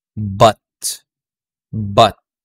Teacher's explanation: unrounded neutral and relaxed so hardly any movement so very relaxed